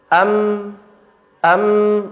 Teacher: dia terhentinya di bibir, berarti dia sama kayak huruf ba di bibir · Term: huruf mim